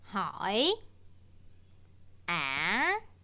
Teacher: we start around the same level as tone two we briefly rise and then there is a sharp drop followed by another gradual rise finishing a little bit higher than when we started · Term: question tone